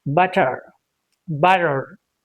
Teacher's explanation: For Americans, it's okay to say butter, butter. R sound gets heard. It's audible. It doesn't become silent in American English.